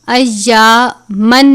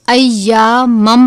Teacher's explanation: میم مشدد اور نون مشدد، 2 زبر 2 زیر 2 پیش، ان پر ہمیشہ غنہ کرتے ہیں. تو یہاں پر ہم تنوین کو میم مشدد سے ملا کر ادا کریں گے. ایامن نہیں پڑھیں گے بلکہ ایامم پڑھیں گے، غنہ بھی کرتے ہیں.